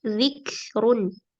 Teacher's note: Berikan sifat hams pada kaf